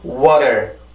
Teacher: 네, 지금 하고 있는 게 T의 순수한 발음이고, 또 T가 이렇게 플랩 사운드, 즉 약화 현상이 생기는 경우는 T 발음이 가지고 있는 음절에 강세가 없어야 되고, 그리고 T 발음이 앞뒤로 모여서 이렇게 T 발음이 앞뒤로 몸으로 감싸져 있을 경우에 그런 식으로 발음이 될 수가 있는데, 절대로 R 발음이 아니라 반드시 치조를 쳐줘야 되는 건 맞아요. 하지만 강하게 눌러서 T 발음처럼 내는 게 아니라 살짝 치기만 하는 거죠.